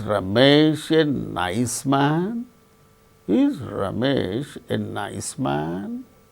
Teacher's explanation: all these cases we have to use Rising tone fall rise when there's a sense of doubt we use fall rise